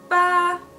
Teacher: it is a straight line, and it is a high and steady sound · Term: first tone